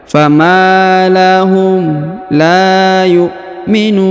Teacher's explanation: huruf nu dipanjangkan 2, 4 atau 6 harokat karena di depan huruf nu terdapat waw sukun sebelum huruf pemberhentian, dan huruf pemberhentian disukunkan atau dimatikan.